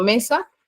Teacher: su sílaba tónica es me su sílaba atona sa